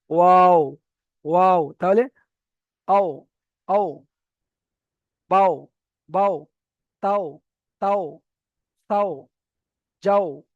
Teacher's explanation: তাহলে এখানে ওয়াও এর উচ্চারণটা আমরা বুঝতে পারলাম। দুই ঠোঁট না মিলিয়ে মাঝখান উচ্চারিত হয় ওয়াও। · দুই ঠোঁট না মিলিয়ে মাঝখান বরাবর, মাঝখান উচ্চারিত হয় ওয়াও। তাহলে দুটো ঠোঁট মিলবে না, মেলার কাছাকাছি এসে মাঝখান থেকে ওয়াও উচ্চারিত হয়ে যাবে।